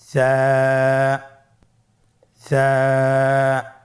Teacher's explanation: জিহ্বার আগা সামনের উপরের দুই দাঁতের আগার সঙ্গে লাগিয়ে উচ্চারিত হয়।